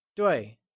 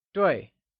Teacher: 对 is pronounced using a falling tone